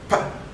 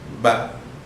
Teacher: during the production of this sound, the pa, there is no voice, there is no vibration in the vocal cords. Whereas ba, there is a vocal, there is a vibration is there in the vocal cord. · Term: voiceless